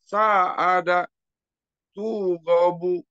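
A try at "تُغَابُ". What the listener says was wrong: Hati-hati tunya Bu. Pak, tunya Pak kepanjangan. Tugobu, tapi tugobu.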